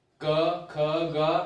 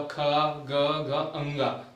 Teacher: जैसे मैं क बोलूंगा क ख ग, क बोलूंगा ख ग घ अंगा, तो क वर्ग का जो उच्चारण हो रहा है वो कंठ से होता है। क वर्ग की जितनी भी ध्वनियां है वो कंठ को स्पर्श करती हुई बाहर निकल रही है।